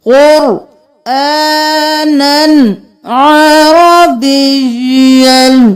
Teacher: قر رو موٹا, قاف موٹا, کھڑی زبر ہے کلف کے برابر, قرآن نہیں کرنا. قرآنا نن نہیں کرنا کیونکہ آگے عین ہے تو ہم اظہار کریں گے, نن کریں گے.